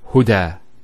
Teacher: There's the elongation as well, because of the fatha followed by an alif. If this wasn't there, it'll be huda, but huda with the alif.